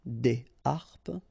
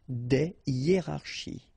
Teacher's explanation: So, but in that case still, even if you've got this H, okay, it belongs to this aspiré group of words, so containing this H, okay, and it means that you won't have the possibility to make the liaison between your article and your word. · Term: H aspiré